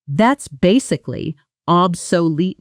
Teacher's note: the middle syllables almost rush together